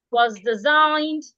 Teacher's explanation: your voice should go down, up